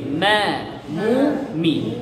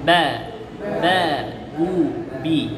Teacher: মিম হচ্ছে ঠোঁটের শুকনা অংশ মিলিয়ে, আর বা হচ্ছে ভেজা অংশ মিলিয়ে।